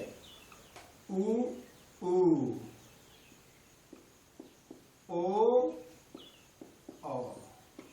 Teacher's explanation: और जीभ के पक्ष भाग से, पक्ष माने, पक्ष माने पिछले भाग से, जीभ के पिछले भाग से जो है उ, बड़ा ओ और औ बोला जाता है